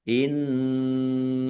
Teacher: nun tasdid dibaca ghunah atau mendengung. Ditahan biar tampak mendengungnya. Innallaha Allahnya dibaca tebal karena harakat di depannya fathah.